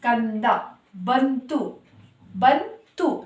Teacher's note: ನ ಅಕ್ಷರ ಬರ್ತಾ ಇದೆ ಯಾಕೆಂದರೆ ಸೊನ್ನೆ ಮುಂದೆ ಇರುವಂತಹ ಅಕ್ಷರ ಬಂದು ತ ಅಕ್ಷರ ಬಂದು ತ ವರ್ಗಕ್ಕೆ ಸೇರಿರೋದ್ರಿಂದ